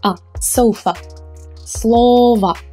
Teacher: the ending o is unstressed it's unstressed so we will pronounce it as a weak ah remember as in the word sofa